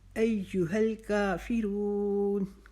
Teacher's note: کا کو ہم نے 1 الف کے جتنا کھینچنا ہے، فی کو لمبا نہیں کریں گے، رون کو ہم لمبا کریں گے۔ کا فی کو ہم نے نہیں کھینچا۔